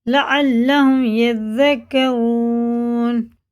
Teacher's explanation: واو ساکن سے پہلے پیش ہے تو الٹے پیش کی طرح کھینچ کے پڑھیں گے